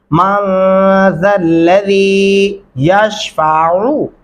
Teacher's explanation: आइन गले से पढ़ते हैं